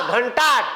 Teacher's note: ट च्या लाईनीतला अनुनासिक न म्हणून इथं बानाचा न आला